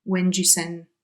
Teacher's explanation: And then the D sound is missing on send.